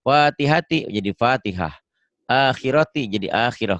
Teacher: Tak marbutoh jika dihentikan jadi H.